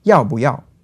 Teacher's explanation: 不 often becomes a fifth tone instead